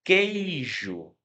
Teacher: Você não escuta o som do U, você não fala queijo, você fala queijo.